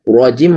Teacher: rohnya tebal, tidak boleh terlalu getar